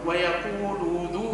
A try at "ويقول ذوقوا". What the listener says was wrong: ما نمدش، ما نقولش ويقول،